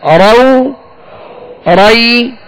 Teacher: لال واو زبر راو، لال یا زبر رائی، راو رائی، را واو زبر راو، را یا زبر رائی، راو رائی. را کو پر پڑھیں گے، را پر زبر ہو تو را موٹا پڑھا جائے گا